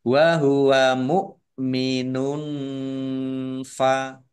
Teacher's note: Domah tanwin bertemu dengan huruf fa, bacaan ikhfa, dibaca samar-samar.